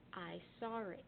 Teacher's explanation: the R kind of stands as a hyphen between saw and it, rolling them together to make one word, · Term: intrusive R